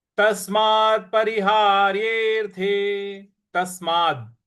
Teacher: त के बाद जो आधा स है उस पर हमको आघात देना है।